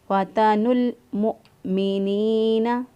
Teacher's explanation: گے فتنوا المؤمنین، حمزہ کو جھٹکے سے پڑھیں گے، فتنوا المؤمنین، نون زیر یعنی یا مدہ، یا ساکن سے پہلے والے حرف کے نیچے زیر، تو اس لیے ایک الف کے برابر اس کو لمبا کریں گے